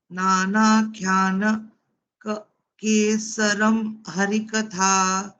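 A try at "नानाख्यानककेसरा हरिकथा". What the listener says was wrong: No, there are two Ks there. No, one is K and the other is K. So Nana Kyanaka Kesaram Harikatha.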